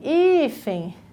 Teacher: a penúltima é a mais forte